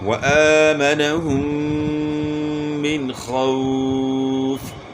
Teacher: اور یہاں میم ساکن میں اظہار ہوگا، میم مشدد میں غنہ ہوگا، نون ساکن میں اظہار ہوگا کیونکہ نون ساکن کے بعد حروف حلقی میں سے خا آ گئی ہے تو یہاں اظہار ہوگا، غنہ نہیں ہوگا.